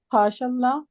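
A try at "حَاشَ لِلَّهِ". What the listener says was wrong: हाशल्ला नहीं है, हाशा लिल्लाही है, कहाँ पे है, हाँ लिल्लाही है ये, इसको अल्लाह ना पढ़े ना, इसको मिलाना भी नहीं, इसको मिलाना नहीं है, ये लिल्लाही है, लाम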